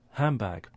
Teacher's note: N, D and B. Now, because of elision, the D sound disappears. That puts the N sound next to the B sound, and it starts to change to a M. So that's assimilation.